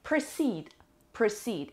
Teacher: It has two syllables and the stress is on the second syllable. و دقت بکنین که this is the long sound.